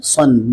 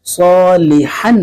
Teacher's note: تنوین کی آواز میں جو ہے نون ساکن کی آواز آتی ہے، جیسے صاد دو زبر سن، نون دو زبر نن، صالحن، یہ جو آخر میں ان کی آواز آ رہی ہے، اصل میں یہ نون ساکن کی آواز آ رہی ہے۔